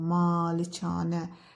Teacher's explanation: Hər iki a uzun tələffüz olunacaq.